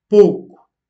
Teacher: au nord du Portugal, contrairement à d'autres régions du pays, euh, ce mot, pouco, est prononcé comme une diphtongue